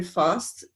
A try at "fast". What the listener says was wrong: I love your British pronunciation when you said fast.